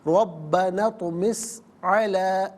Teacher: یہاں پر مد منفصل ہے، مد جائز بھی کہتے ہیں، منیمم 3 الف کی مقدار پڑھ سکتے ہیں، پڑھنا جائز ہے، میگزیمم 5 الف کی مقدار کھینچ کر پڑھا جا سکتا ہے۔